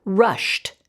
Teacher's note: in front of my lips not in my throat that means ed will take the unvoiced t sound